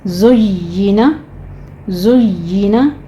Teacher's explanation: कज़ालिका ज़ुय्यिना, ज़य के ऊपर हमने सीटी की आवाज़ लेकर आनी है, कभी आवाज़ के साथ इसको पढ़ना है। और या के ऊपर तशदीद है, लेकिन आपने शीन या जीम की आवाज़ नहीं लानी। या के नीचे ज़ेर है, आगे आपने इसकी आवाज़ को बारीक कर लेना है।